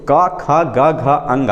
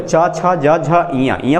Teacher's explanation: वो वर्ग के जो पांचवा अक्षर होता है वो नाक से बोला जाता है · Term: नासिका वर्ण